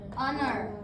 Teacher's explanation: Jadi H-nya itu bisu, diam, enggak disebut.